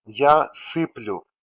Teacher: The conjugated stem here is сыпль, and it is same for all present future forms. In they form and I form, vowel sound u follows soft consonant sound l, which is why soft vowel letter u stands for this sound u.